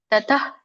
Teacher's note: ತತಃ ಅಲ್ಪವಾಗಿ ಹ ಉಚ್ಚಾರಣೆ ಮಾಡ್ಬೇಕು. ತತಃ ಹ ಕೇಳಿಸ್ಬೇಕು, ಬಟ್ ಪೂರ್ಣ ಅಲ್ಲ. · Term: ವಿಸರ್ಗ